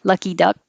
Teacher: I'm not releasing my K, duck, because a lot of times you won't hear that in speech